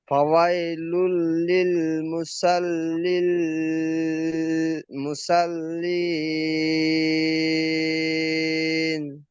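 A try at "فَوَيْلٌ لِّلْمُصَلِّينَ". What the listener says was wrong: মুসাল হবে না, মুসল। সদ অক্ষরটি লামের সাথে যুক্ত হবে, সদ অক্ষরটি স্টার চিহ্ন ল অক্ষর মুখ গোল করে পড়তে হবে।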